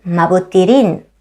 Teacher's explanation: if the word before it ends in a vowel, it changes to rin for smoother pronunciation